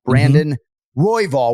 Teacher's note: We're emphasizing the Roy, not Royval. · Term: syllabic emphasis